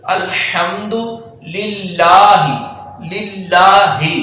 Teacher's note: تو اللہ کا لام باریک پڑھا جائے گا۔ تو کیونکہ اللہ کا لام یہ ہے، اس سے پہلے والا جو لام ہے اس کے نیچے زیر ہے، اس لیے ہم یہاں اللہ کا لام باریک پڑھیں گے۔